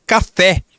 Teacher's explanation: Então, a última sílaba é a que é a mais forte. Quando a última sílaba for mais forte, nós dizemos que essa palavra é oxítona.